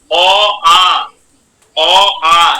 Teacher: অ আ এর উচ্চারণ কোথা থেকে হচ্ছে বলছে কন্ঠ থেকে হচ্ছে এবং জীভমূল থেকে হচ্ছে · কণ্ঠ থেকে হচ্ছে এবং জিহ্বামূল থেকে হচ্ছে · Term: কন্ঠধ্বনি, কণ্ঠধ্বনি